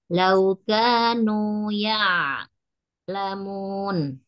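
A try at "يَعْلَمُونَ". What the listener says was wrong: Ya, jadi ianya jangan dipanjangkan, ainnya dialirkan. Laukanu ya lamun.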